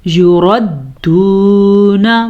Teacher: واو مدہ اور نون کو لمبا نہیں کریں گے کیونکہ نون کے اوپر زبر ہے